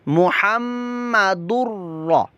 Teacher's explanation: मुहम्मदुर्रा, रा पुर मोटा भी पढ़ा जाएगा क्योंकि रा पर ज़बर पेश हो तो उसको पुर मोटा पढ़ते हैं